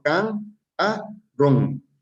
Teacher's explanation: tiene tres sílabas no cierto can a ron por lo tanto el acento lleva en la última en la última sílaba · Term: sílaba tónica